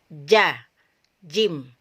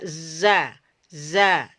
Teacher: bocor atau tidak mengalir ya tertahan di mana Di lidah bagian tengah dengan langit-langit bagian atasnya bagian tengah